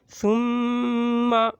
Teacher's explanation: غنہ کہتے ہیں ناک میں چھپا کر پڑھنے کو، اور 1 الف کے برابر ناک میں چھپا کر پڑھنا ہے